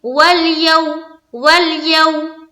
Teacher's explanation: वावलीन को हम नरमी के साथ और जल्द अदा करते हैं, सख्ती पैदा नहीं करते हैं, देर नहीं लगाते हैं, खींचते नहीं हैं।